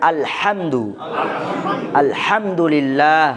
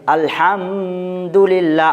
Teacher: ভুল হবে, কারণ এখানে মিম সাকিন আছে, কিন্তু মিম সাকিনের পরে বাও নাই, মিমও নেই, যার কারণে মিম সাকিনকে গুণনা করা এখানে যাবে না।